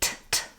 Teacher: It's a true T rather than a flap. By true T, I mean aspirated T, t. I should feel a puff of air when I'm saying that.